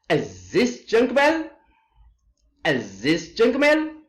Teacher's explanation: rises in volume when spoken and pronounced with the rising tone. Volume as well as tone rises here.